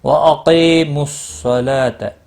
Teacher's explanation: وَأَقِيمُوا الصَّلَاةَ، قاف مستعلیہ ہے، پر پڑھا جائے گا، کی یا مدہ ہے، ایک الف کے برابر کھینچ کر پڑھیں گے۔ صاد مستعلیہ ہے، پر پڑھا جائے گا، لام کے اوپر کھڑی زبر ہے، ایک الف کے برابر کھینچ کر پڑھیں گے۔